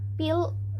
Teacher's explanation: The p sound in pill is accompanied by a slight puff of air that is called an aspiration. So, it is an aspirated p sound.